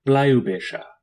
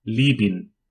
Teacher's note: It is a voiced bilabial stop, pronounced just like the B in birch, and in transliteration is also represented by the letter B.